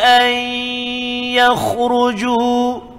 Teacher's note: Masukkan bunyi nun ke dalam ya. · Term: Idgham ma'al gunnah